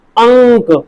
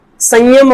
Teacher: अनुस्वार में नाक से ज्यादा आवाज आएगी। नाक से आवाज मुंह से ज्यादा आएगी। नाक से ज्यादा आवाज।